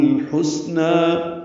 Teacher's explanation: سین ساکن پہ ہمس ہے، سانس جاری رہے گی اس کے پڑھتے ہوئے